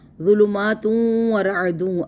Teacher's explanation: یہاں پہ تنوین کے بعد یرملون کا واو، اس لیے ادغام